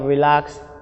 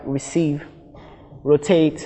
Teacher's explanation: in the case of verbs and prepositions the syllable the stress falls on the second syllable